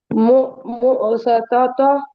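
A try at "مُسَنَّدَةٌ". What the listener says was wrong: சொதத்தா பெலே பெலே ஹாவா மாத்தி சுக்குன் வைக்கணும். தாவ மாத்திடணும், தாவ தூக்கிடணும், தாவ வைக்கப்படாது. விளங்கிட்டு சொன்னீங்களே இப்ப தாவுல் மர்பூத்தாவ பெரிய ஹாவாக மாற்றி சுக்குன வைக்கணும்.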